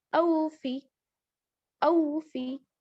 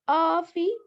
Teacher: آ یہ غلط، مجہول طریقہ ہے یہ پڑھنے کا. آ نہیں پڑھیں گے، او پڑھیں گے